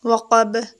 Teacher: واو پر lips کو گول کریں گے